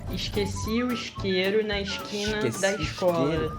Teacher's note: pelo S com som de sh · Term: chia do Rio